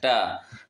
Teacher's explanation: ट का उच्चारण स्थान होता है बोलो। मूर्धा होता है।